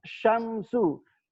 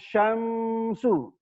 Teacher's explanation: ketemu mim sukun ketemu sin ya, itu nggak boleh ditahan. Jadi membaca idza syamsu langsung syamsu, bukan syamsu ya, nggak boleh ditahan. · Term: idhar syafawi